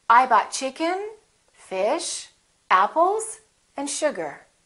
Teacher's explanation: have a rising intonation i bought chicken fish apples and sugar the last one will have falling intonation so we go up up up down